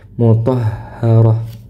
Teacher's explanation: ta marbutah ketika di akhir bacaan akan selalu berubah akan selalu berubah menjadi huruf ha sukun